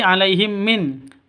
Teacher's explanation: Mim mati bertemu dengan mim. Cara bacanya masuk ke mim, yang kedua ditambah dengan dengung, disertai dengung 2 ketukan karena bacaan idgham mimi.